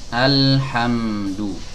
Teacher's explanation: huruf mim keluar dari dua bibir yang dirapatkan.